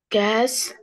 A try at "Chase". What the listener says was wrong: ال C وال H هنا هتتنطق تشه، طبعا هناخدها بعدين بس بقولها لك.